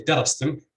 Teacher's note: with stress on the first syllable, even though the second syllable is heavy